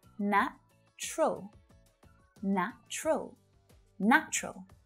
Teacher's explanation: native speakers usually reduce the pronunciation of this word down to just two syllables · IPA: /'næ t∫rəl/